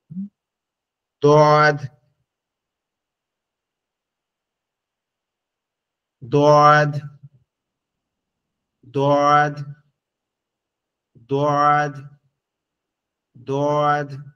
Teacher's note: জিহ্বার শেষ অংশ লাগবে উপরের দাঁতের সঙ্গে